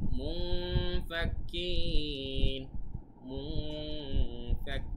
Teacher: নুন সাকিনের পরে ফা এসেছে, ইকফার হরফ, তাই গুণনা করতে হচ্ছে